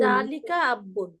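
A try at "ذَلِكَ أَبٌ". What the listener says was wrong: জালিকা আব্বুন না, আবুন।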